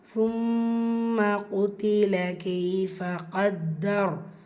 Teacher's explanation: சும்ம மீமு ஷத்தா குன்னா செய்யணும்